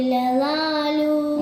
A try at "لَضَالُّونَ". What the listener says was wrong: ഒന്നും കൂടി നീട്ടണം നമ്മുടെ. ലളാലൂൻ. ഇവിടെ ലാമിന് ശബ്ദുണ്ട്. ലളാലൂൻ. ശബ്ദിന് ഒന്നുകൊണ്ട് കട്ടി കനം കൂട്ടിയിട്ട് ഓതിയാൽ മതി. ലളാലൂൻ.